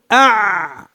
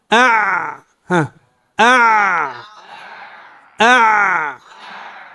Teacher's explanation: ينغلق وينقطع بعد أن جرى منه شيء يسير، بخلاف الحاء نستطيع أن نطيل في ذلك، لكن في العين أع أع أع لا نستطيع أن نبالغ في جريان صوتها. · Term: صوت العين